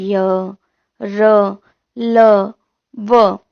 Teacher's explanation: उच्चारण में श्वास का अवरोध कम होता है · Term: अंतस्थ व्यंजन